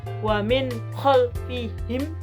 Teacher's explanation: Kemudian ada surat Yasin ayat 9 yang berbunyi wa min khalfihim, yaitu nun sukun atau nun mati bertemu dengan huruf kha. Membacanya jadi jelas wa min khalfihim. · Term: idhar halqi